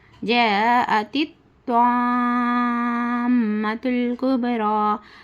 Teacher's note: حرف مدہ کے بعد حمزہ اسی کلمے میں ہے تو اس کو 5 حرکت کے برابر کھینچ کر پڑھنا ، یعنی 3 4 الف کے برابر کھینچ کر پڑھنا، اور